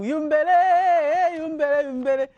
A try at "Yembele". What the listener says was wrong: not Yumbele, it's Yembele. Yes, not Yumbele, it's Yembele.